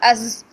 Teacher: حمزہ زبر زا از، اس میں بزنگ ساؤنڈ ہوتی ہے